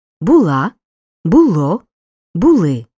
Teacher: несу зверни увагу на особливості наголошення дієслова бути у минулому часі наголос падає на останній склад